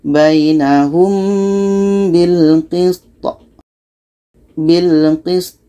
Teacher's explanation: Ini pendek, maka kita matikan. To mati hukumnya qalqalah. Jadi kita pantulkan ya.